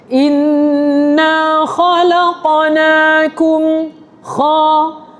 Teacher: Kum tu sahaja yang muncung sebab kaf tu bertanda dammah.